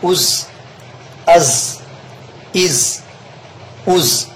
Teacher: صفت صفیر کا خیال رکھیں اور زا سین صاد میں سیٹی کی آواز نکلوائیں۔